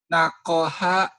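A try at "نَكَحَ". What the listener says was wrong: Nakaha. Ini bunyi A. Kamu ketuk.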